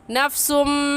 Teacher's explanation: یہاں پر غنہ ادغام کے ساتھ ہوگا، اور ایسے غنہ کریں گے نفسم۔